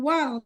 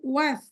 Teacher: lamnya tidak dibaca, tapi dibaca huruf setelahnya ya, bukan wal, tapi was ya, lamnya nggak dibaca, karena fa-nya dibaca maka disebut dengan alif lam syamsiyah ya.